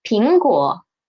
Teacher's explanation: It is a third tone and it is in a disyllabic word, so we should read it as a half third tone